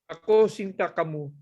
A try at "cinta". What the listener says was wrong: Ako Cinta. Not Sinta, Cinta. Cinta. Every letter C, if it's followed by an I and an A, is pronounced ch. Cinta, cantik.